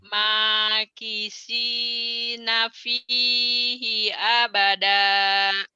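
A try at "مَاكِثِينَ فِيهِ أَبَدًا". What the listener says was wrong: Bagus, tapi itu masih sin. makisi, nih dengerin ya. Makilsi, kayak cadel, kayak kan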